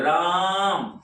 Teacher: आप भी बोल के देखिए राम, तो रा पर ज्यादा जोर पड़ रहा है और ज्यादा जो है लंबा स्वर भी खिंचाता है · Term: वर्ण बलाघात